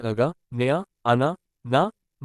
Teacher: इनका उच्चारण नासिका के साथ क्रमशः कंठ, तालु, मूर्धा, दांत तथा ओष्ठ के स्पर्श से होता है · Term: नासिक्य व्यंजन